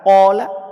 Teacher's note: ada alif, sebelumnya ada qaf. Qaf huruf tebal, sehingga alifnya dibaca tebal.